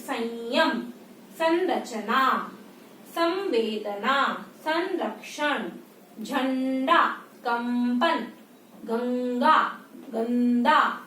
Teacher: इसका उच्चारण नाक से होता है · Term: अनुस्वार